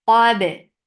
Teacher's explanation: ba is majhura letter. There is no flow of breath or sound, so the qalqala will be very clear.